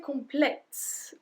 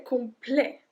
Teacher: So we don't say complète, we don't pronounce the T, we say complet.